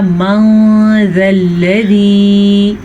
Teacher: جب بھی قرآن مجید میں نون ساکن کے بعد یا تنوین کے بعد حروف اخفا میں سے کوئی حرف آ جائے تو نون ساکن یا تنوین کی آواز کو چھپا کے پڑھتے ہیں. اب اس کو اگر ہم ظاہر پڑھیں گے تو ہم پڑھیں گے من ذا الذی، تو ہم نے تجوید کا ایک بڑا قاعدہ اخفا ادا ہی نہیں کیا.